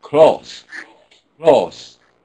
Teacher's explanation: they're just making it like a single vowel instead of putting that second stage in.